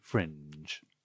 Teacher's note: lowering intonation towards the end